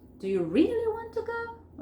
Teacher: Primero acentúo el really, ¿ok? Después lo digo un poco más despacio y la última parte levanto la entonación como para sugerir sorpresa.